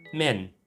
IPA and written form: men (men)